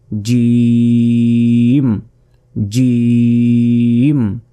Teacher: মাঝখানের ঠিক তার বরাবর উপরে তালুর সঙ্গে লাগিয়ে এই জিম অক্ষরটি উচ্চারিত হয়